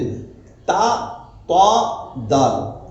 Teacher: நாவின் நுனியை முன்னால் இருக்கக்கூடிய 2 பற்களினுடைய அந்த வேரிலே சேர்த்த வேண்டும்.